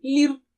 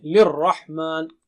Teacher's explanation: را پر شدہ ہے، تشدید ہے تو دونوں موٹے ہوں گے، دونوں آوازیں